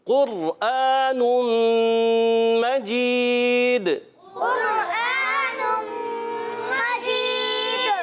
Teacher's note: قاف جو ہے حروف مستعلیہ میں سے، موٹے حروف میں سے موٹا ادا کریں گے، اور قاف کے بعد را پر سکون ہے، را ساکن ہے۔